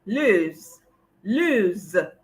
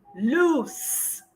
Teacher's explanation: pronounce the first one, Lose, as lose with a Z. The second one is loose with an S.